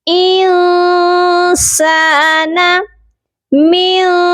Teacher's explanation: یہاں پر دیکھیے نون ساکن ہے اور اس کے بعد حروف اخفا ہے۔ یہاں پر نون ساکن پر ہم اپنی آواز کو ناک میں چھپا کر پڑھیں گے، یعنی کہ سافٹ غنہ کریں گے